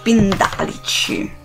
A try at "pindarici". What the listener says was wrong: Con la L.